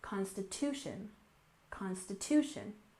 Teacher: and finally we have Constitution with stress on the syllable here a secondary stress on the first syllable